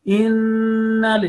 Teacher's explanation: your voice should stay inside your nose. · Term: noon mushaddad